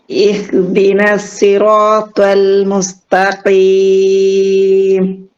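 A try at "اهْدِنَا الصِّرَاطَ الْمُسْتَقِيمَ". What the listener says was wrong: സ്വാദിലേക്ക് ഒന്നുകൂടെ വരട്ടെ. തുവ എന്ന് വാ വരണോന്നില്ല. പക്ഷെ സീ എന്നുള്ളത് കുറച്ചും കൂടെ സീനെന്ന് സാദിലേക്ക്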